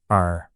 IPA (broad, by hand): ʊr